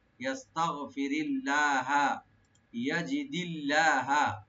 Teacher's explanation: লফজ জালালে এখানে লাইট হবে ইয়াস্তাগফিরিল্লাহা, ইয়াজিদিল্লাহা, ইয়াজি, ইয়া ওপেন রাখবেন, জিমটাকে রাইট দিবেন, আর দালটাকে দালের নিচে জের। লফজ জালালে এখানেও পাতলা করে পড়া হবে, লাইট করে।